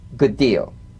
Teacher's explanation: Identical, D to D, good deal. You don't need to fully pronounce the first D like good deal.